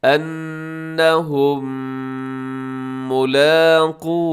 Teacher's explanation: میم ساکن کے بعد پھر میم آ گیا تو دونوں کو ہم نے ملا دیا ہے ، دونوں مل گئے ہیں، تو یہاں پر ادغام شفوی غنے